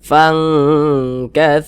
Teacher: tapi tapi dia lebih condong berbunyi Eng Fang katsiroh kemudian didengungkan jadi pada bagian fangnya itu kita tahan kita panjangkan sejenak · Akan tetapi di sini kadar samarnya atau kadar ikhfanya itu dia rendah, sehingga kadar dengungnya dia yang lebih tinggi, sehingga dia lebih condong berbunyi eng. Kita baca fang, jangan dibaca fang, jangan, tapi dia lebih condong berbunyi eng. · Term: ikhfa hakiki ab'ad